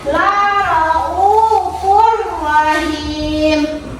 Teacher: Hukum bacaannya tanwin bertemu dengan ro, yaitu idgham bila gunnah. Memasukkan dengan cara tidak mendengung, yang los bacanya laraufur rahim.